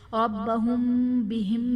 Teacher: یہاں پر میم ساکن میں ہم غنہ کر کے پڑھیں گے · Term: اخفاء شفوی